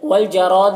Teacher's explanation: را کو پر پڑھیں گے، زبر ہے اور الف مدہ ہے، 1 الف کے برابر کھینچیں گے